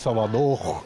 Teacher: os pesquisadores perceberam que este R desaparece em alguns lugares